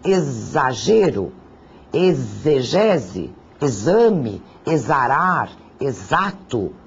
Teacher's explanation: Todos eles são grafados com X, mas o som que eu percebo é um som de Z.